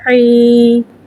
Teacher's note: یا کو ایک الف یعنی 2 حرکات کے برابر کھینچ کے پڑھیں گے۔ یا ساکن سے پہلے زیر آ رہا ہے، یا مدہ ہو رہا ہے اور زیر کو نیچے گرا کے ادا کریں گے۔